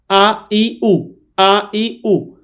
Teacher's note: হামজা হলকের শুরু থেকে শক্ত করে পড়তে হয়।